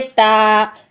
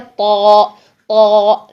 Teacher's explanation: और वही चीज जो मैंने आपको पहले बताई कि ता के लिए आवाज सीधी मुंह से बाहर आती है, ता, ठीक है। और जो तौ है उसके लिए आवाज का प्रेशर पीछे हल्क की तरफ जाता है